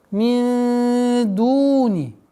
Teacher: Ихфа в размере двух огласовок с назализацией.